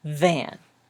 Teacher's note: you kind of hum a little bit so start humming hmm and then put your top teeth on your bottom lip and the air kind of blows out but you're mostly humming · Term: the V